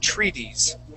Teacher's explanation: that second t is going to feel like a d